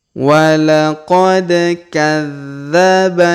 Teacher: Walaqad kadzdzaba, perhatikan huruf dza berharokat tasdid, maka kita tahan dan kita tekan pada huruf dza